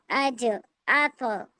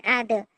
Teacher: कलकला की आवाज अपने मखरज पर जाने के बाद लौटती हुई मालूम होती है। और इस बात का ख्याल रखना है कि कलकला कलकला वाला हर्फ तशदीद वाला हर्फ ना बन जाए।